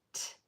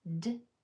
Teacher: the T sound is voiceless, T. The D sound is voiced, D. And it will make its voiceless or voiced sound when the sound before it is either voiceless or voiced, meaning your vocal cords are used or not used.